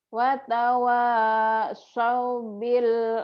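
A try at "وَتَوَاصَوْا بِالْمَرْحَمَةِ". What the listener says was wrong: So. So jangan sao. So. Watawa. So. So. So. Watawasau bil marhamah.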